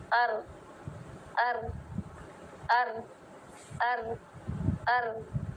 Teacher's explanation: जुबान जुड़ी हुई है मसूरों से। ठीक है? लेकिन ज्यादा टाइट नहीं है लेकिन जगह भी नहीं दे रही। लाम की तरह खुली हुई भी नहीं है। · रा में थोड़ा सा पीछे आके जो लाइन है, मसूड़े पे बिल्कुल दांतों के करीब नहीं लगेगा, थोड़ा पीछे आइए, पीछे आके इस वाले ऊपर वाले हिस्से को ऊपर लगाइए।